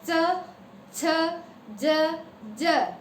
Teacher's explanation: Middle जो जीभ है, आगे की नोक नहीं, मिडल जीभ तालु को टच कर रही है।